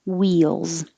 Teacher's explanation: same situation but now the vowel is e wheel wheel and the plural looks like an s but sounds like a z wheels differential differentiate and this one genre it's from french so